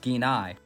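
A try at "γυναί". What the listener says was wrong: So the gamma is not just silent in Greek, it's pronounced somewhere between a G and a Y. So this word is yine in modern Greek, and also the gamma nu consonant cluster has its own pronunciation precisely because it's a consonant cluster.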